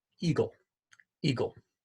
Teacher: your throat closes you trap air and then your throat opens air rushes over your vocal cords and you begin to articulate the e sound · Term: glottal stop